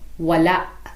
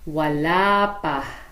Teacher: Wala. But when such words are immediately followed by another word, there is no glottal stop, and the final vowel becomes longer instead.